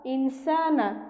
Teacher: হামজা নুন জের ইন, সিন খালি আলিফ জবর সা, এখানে নুন সাকিনের বামে সিন এসেছে অর্থাৎ নুন সাকিনে ইকফা, আমরা এখানে ইকফা অর্থাৎ অস্পষ্ট গুন্না করে পড়ব।